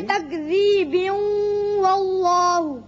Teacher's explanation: وصل کی صورت میں با کی تنوین واو سے ملے گی اور ادغام بغنہ ہوگا